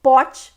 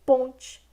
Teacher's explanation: É a transformação de um fonema oral em nasal, viu? Em vez do fonema ser oral lá, ele se nasaliza. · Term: nasalização